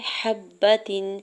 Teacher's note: حبتن، ہا کے زبر کو با مشدد کے ساتھ ملاتے ہوئے پڑھنا ہے۔ تا کے نیچے 2 زیر کی تنوین پر اظہار حلقی ہوگا، یعنی یہاں پہ غنہ یا اخفا نہیں کریں گے